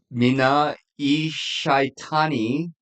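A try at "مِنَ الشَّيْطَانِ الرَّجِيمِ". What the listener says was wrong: that's an L. That's a letter L.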